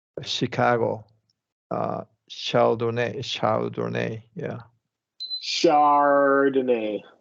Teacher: French origin, the CH sound is going to get the sh sound.